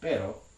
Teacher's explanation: with imagine me actually successfully completing that trill spanish also has another r sound that might be a shorter version of the trill that's referred to as a tap